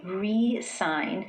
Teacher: when the stress is placed on the first syllable and I say re-sign, I'm putting my focus on the prefix re